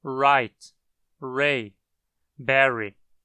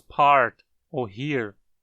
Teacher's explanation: Mas, por simplificação, costuma-se representar só o símbolo da labialização. A letra R no inglês costuma ser uma aproximante alveolar sonora labializada quando aparece antes de uma vogal. Perceba como os lábios se arredondam no R ao falarmos right, ray, berry, mas não se arredondam quando falamos part ou here.